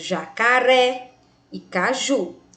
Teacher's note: Perceba que o ré e o ju, mais forte, né, tônico, posicionado na última sílaba, e que jacaré tem acento e caju não. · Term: Oxítona